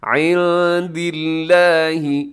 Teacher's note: لفظ اللہ کو باریک پڑیے گا کیونکہ اس سے پہلے دال کے نیچے زیر ہے